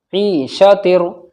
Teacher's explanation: अब तनवीन के बाद में रा आ रहा है तो इदगाम ताम होगा बगैर गुन्ना के। ईशा तिर, रा अलिफ वा रा के ऊपर जबर है तो रा मोटा पढ़ा जाएगा, और अलिफ से पहले रा के ऊपर जबर है तो अलिफ मद्दा होगा यानी खिंचेगा।